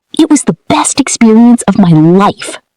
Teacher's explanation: Stress best and life.